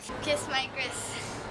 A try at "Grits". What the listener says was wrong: Gris. It's Grits, not Gris.